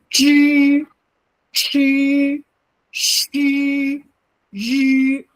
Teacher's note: retroflex, meaning your tongue in your mouth will go up and bend backwards to say the sound. So when I say it, is you see my mouth changes.